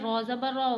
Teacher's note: را کو موٹا پڑھنا ہے